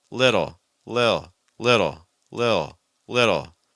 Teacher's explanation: we're really trying to soften that fast D sound